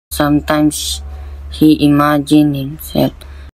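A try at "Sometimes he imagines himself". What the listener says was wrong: He again omitted the S sound from the word imagines.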